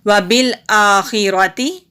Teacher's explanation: وبالآخرۃ، واو کے اوپر زبر، با کے نیچے زیر ہے، با کو لام کے ساتھ ملائیں گے، الف کے اوپر کھڑی زبر ہے، ایک الف کے برابر لمبا، خا حروف مستعلیہ میں سے ہے، حروف ہلکی بھی ہے، حلق سے نکالیں گے اور موٹا بھی پڑھیں گے۔ را کے اوپر زبر ہے تو را کو جلدی پڑھیں گے، تا کے نیچے زیر ہے، تا کو بھی جلدی پڑھیں گے۔